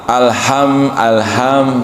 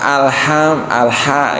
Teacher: Justru yang harusnya kita yang benar itu adalah alha yang tipis saja.